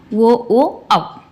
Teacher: ಕಂಠ ಮತ್ತು ಓಷ್ಟ್ಯಗಳ ಸಹಾಯದಿಂದ ಉಚ್ಚರಿಸಲ್ಪಡುವಂತಹ ಅಕ್ಷರಗಳನ್ನ ನಾವು ಏನಂತ ಕರೀತೀವಿ ಕಂಠೋಷ್ಟ್ಯ